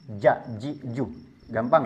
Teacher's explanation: dari segi nafas dia bersifat jahr. Artinya tidak ada nafas yang keluar. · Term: jahar